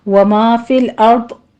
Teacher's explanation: را بھی مفخم ہے، داد بھی پر ہے